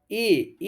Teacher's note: ए शब्द जो है कंठ तालव्य होता है